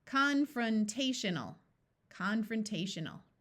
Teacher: n a l as a suffix sounds more like l rather than a clear Al sound · I would like to point out that this O will schwa and take on a muffled short U sound. And AL as a suffix sounds more like ul rather than a clear AL sound.